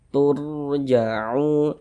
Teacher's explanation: Sebelum rasukun ada ini harokat dhammah, maka huruf rasukunnya dibaca tebal, dibaca tabkhim, sehingga pangkalisan kita naik terangkat ke atas ketika kita mengucapkannya.